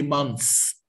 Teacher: we don't pronounce the th so we say months like s · So we put our tongue between our teeth and say months, okay? But if it's a plural, we don't pronounce the TH